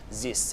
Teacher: French speakers to change their th sounds to Zeds or s's because there is no th sounds in French